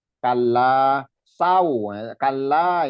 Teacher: Kalla kalla itu lamnya ditekan dan dipanjangkan 2 harokat la-nya.